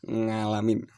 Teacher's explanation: dengan tidak sengaja akan terbawa untuk menuturkan dengan ngalamin, seperti orang Jawa kebanyakan